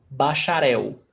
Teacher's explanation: Words ending in L has the pronunciation of U